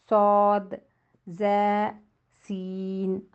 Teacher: اندرونی کناروں سے۔ زبان کی نوک ثنایا اولیہ اور سفلا، اوپر کے 2 دانت، نیچے کے 2 دانت، اس کے کناروں سے لگنے سے ادا ہوں گے · زبان کی نوک سامنے والے 2 دانت اوپر اور نیچے کے کناروں سے لگنے سے ادا ہوں گے